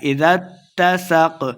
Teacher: ذال کو تا کے سامنے لائیں گے، کیونکہ تا مشدد ہے، سین پہ سیٹی کی آواز آئے گی